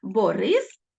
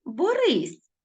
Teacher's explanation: Якщо у нас у слові твердий звук с то це ім'я людини а якщо додати лише м'якість змінити твердий на м'який приголосний то це стає дія